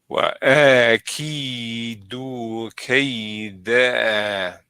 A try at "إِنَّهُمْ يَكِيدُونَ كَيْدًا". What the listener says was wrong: You left out the duna. إنهم يكيدون كيدا.